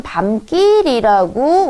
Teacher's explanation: 읽을 때는 밤길이라고 우리가 이유 없이 된소리가 나거든요